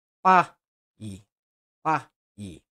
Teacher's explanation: na palavra pai, a sílaba começa forte e termina fraco. A vogal A é mais forte que o I, portanto, um ditongo decrescente. · a sílaba começa com a vogal mais forte e depois a semivogal